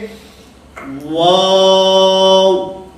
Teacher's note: حالانکہ واو کی ادائیگی میں شروع کے اندر ہونٹوں کو دخل ہے, یعنی واو کا جو مخرج ہے وہ شروع کے اندر ہونٹوں کو گول کرنا ہے